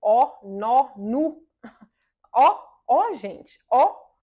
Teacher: os lábios estão pouco para frente mas a língua tá para trás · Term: nosso O